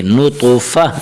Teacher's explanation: اگر وقف کریں گے تو تا کو ہا پڑھیں گے